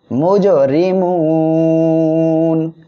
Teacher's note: এখানে ওয়াকফ করলে নুন অক্ষর সাকিন হবে, আর এক আলিফ মদের পরের অক্ষর ওয়াকফের কারণে 3 আলিফ টেনে পড়বো মদ্দার জিয়ের জন্য।